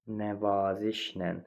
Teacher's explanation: Nəvazişlə vurğu 3-cü hecanın üzərindədir. Sonda deyil.